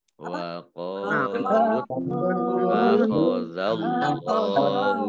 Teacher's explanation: Nah, kemudian tak tasdid ya, dibaca double ya, lu-nya tidak panjang tapi langsung masuk ke ta ya, dibaca double taknya. Kemudian Allahnya dibaca tebal karena harokat di depannya fathah. Lam fathah alif lam fathah alif berdiri mat tabi'i.